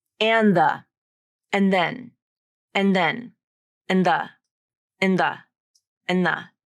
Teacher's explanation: she's dropping that D sound and just pronouncing and like an, and the, and then, and then, and the, and the, and the. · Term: rule of three